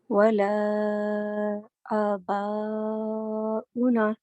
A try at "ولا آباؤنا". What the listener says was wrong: یہاں پر دیکھو, اب اباؤنا پہ نا کو 2 حرکات ضرور کرنا ہے, یہ تھوڑا چھوٹا ہو گیا.